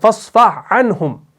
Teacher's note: ہا جو ہے اس کے اندر تھوڑی سی تخفیف ہے اور عین جو ہے اس کے اندر مجہور ہے. اس کو ہم نے بھاری آواز سے ادا کرنا ہوتا ہے, لیکن جب ہم یہاں پر اس میں ادغام کریں گے تو یہ پڑھنے میں بھاری لگے گا, اس کے اندر ایک ثقل پیدا ہوگا. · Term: بغیر ادغام